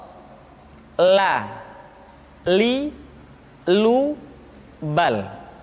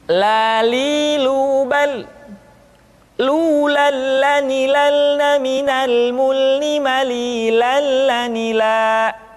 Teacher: huruf la diucapkan dengan mengangkat ujung lidah kita, dengan disentuhkan dengan langit-langit.